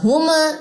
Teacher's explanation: ہم نہ کلکلا ہوگا اور نہ غنہ ہوگا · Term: اظہار شفوی